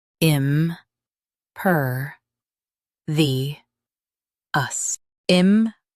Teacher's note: Stress per and keep vi-ous smooth.